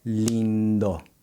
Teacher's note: When I say the lin in lindo, my tongue never touches the roof of the mouth like it does in Spanish.